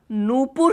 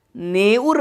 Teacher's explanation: प वर्ण का लोप हुआ पर प्रथम स्थान पे जो उ ध्वनि थी वह एकार में परिवर्तित हो गई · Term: विषमीकरण